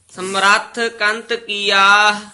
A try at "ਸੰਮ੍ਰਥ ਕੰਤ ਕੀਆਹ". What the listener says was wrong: ਸ ਉੱਤੇ ਟਿੱਪੀ ਹੈ ਨਾ